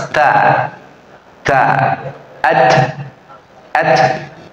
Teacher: ujung lidah kita ketemu gusi atas ya tambah dengan Hames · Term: huruf ta